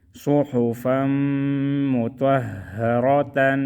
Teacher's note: صاد پیش سو، ہا پیش ہو، فا میم دو زبر فم، میم پیش مو، توا ہا زبر توہ، ہا زبر ہا، را زبر را، تا دو زبر تن، صحفا مطہرۃ۔ میم میں غنہ کریں گے اور را کو موٹا پڑھیں گے، صحفا مطہرۃ۔